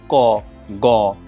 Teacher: উচ্চারণের সময় বাতাসের চাপের স্বল্পতা থাকে সেটা হচ্ছে অল্পপ্রাণ ধ্বনি